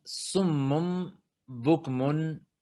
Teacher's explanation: cuando viene una N como consonante y luego sigue una ba, entonces la N se convierte en un sonido de M